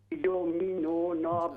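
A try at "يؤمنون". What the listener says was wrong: हमजा पढ़ें, युमिनूना, युमिनूना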